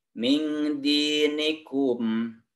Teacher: min didengungkan karena ada nun mati menghadapi huruf dal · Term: ikhfa